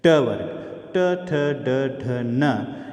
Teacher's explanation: ट वर्ग, ट, ठ, ड, ढ, न, ये मूर्धन्य का स्पर्श करती है